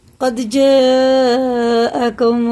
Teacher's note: حمزہ جب آتا ہے اس میں جھٹکا بھی ہوتا ہے، اور یہ مد جو ہے نا 4 الف کے برابر کھینچ کے پڑھتے ہیں، کیونکہ یہ مد متصل ہے، وہ منفصل ہے اور یہ متصل ہے.